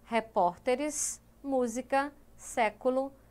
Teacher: proparoxítonas que são as palavras cuja sílaba tônica é a antepenúltima sílaba da palavra